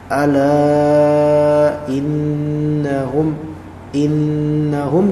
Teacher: innahum digunahkan ada ghunah Nun di sini